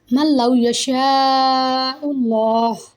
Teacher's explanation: you should have to follow the idgham rule, but read without nasalization sound